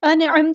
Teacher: نون کی آواز کو یہاں ظاہر کرنا ہے، اظہار ہو رہا ہے ، نون کی آواز کو یہاں ہلانا نہیں ہے، انعمت نہیں